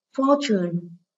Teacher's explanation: Đây là danh từ có 2 âm tiết, nên trọng âm rời âm tiết số 1.